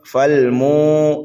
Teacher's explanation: میم کو ہم واو ساکن میں ملائیں گے، میم کو ایک الف کے برابر کھینچ کے پڑھیں گے واو مدہ کی وجہ سے